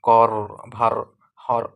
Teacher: যে ধ্বনি উচ্চারণের সময় একের অধিক বা দ্রুত দন্তমূলে আঘাত করে বাধা সৃষ্টি করে। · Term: কম্পিত ব্যঞ্জন